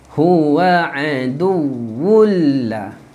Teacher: masuk ke dalam lam tanpa dengung